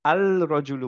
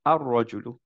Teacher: আল কিন্তু বলিনি আমরা র এর সাথে লামটাকে মার্চ করে দিছি